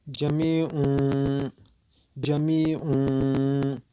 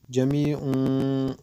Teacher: ба ҷои нуни танвин мим оварда хонда мешавад. мимро мехонем. ҷамиун овозро аз димоғ мебарем. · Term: иқлоб